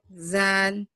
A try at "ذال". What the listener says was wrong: نہیں زا نہیں ہے ذال